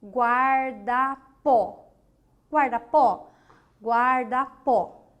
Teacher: quando de trás para frente né a última sílaba é sílaba forte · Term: oxítona